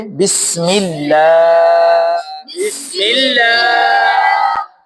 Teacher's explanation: देखो उसका अल्लाह के साथ जो हा लगी हुई थी उसको हमने नहीं पढ़ा · اس کا اللہ کے ساتھ جو ہا لگی ہوئی تھی اس کو ہم نے نہیں پڑھا۔